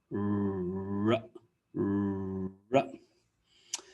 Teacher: So the R sound is a bit different. You don't touch the back of your top teeth with your tongue, and your tongue kind of curls back. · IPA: /r/